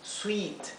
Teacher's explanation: es como una y un poco más larga